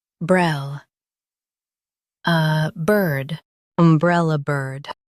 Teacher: Stress brell and keep soft.